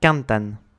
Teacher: Cantan, du verbe cantar, est accentué sur l'avant-dernière syllabe car il se finit par un N